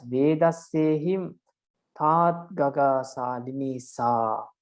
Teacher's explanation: Vedasse is the Magana, Him Tat Ga is the first Tagana, Ga Sali is the second Tagana, Ni Sa are the two heavy syllables.